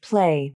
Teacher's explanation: you'll see the lips come together at the beginning of the P sound. Then they open to release the air.